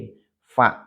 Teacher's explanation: cara melafalkannya atau tempat keluarnya adalah ujung gigi seri bertemu dengan jantung bibir bawah bagian dalam nah bibir bawah yang bagian belakang ya bagian dalam nah ini